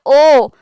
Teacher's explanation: के देखिए ओ तो भी क्या है गोल हो जाएगी और बड़ा ओ को भी बोलेंगे तो भी जो आकृति है वो कैसी हो जाएगी होठों की आकृति गोल हो जाएगी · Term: वृताकार